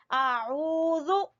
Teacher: आइन को वस्ते हलक से निकालेंगे